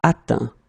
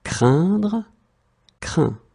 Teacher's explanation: remember final T is not pronounced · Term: final T not pronounced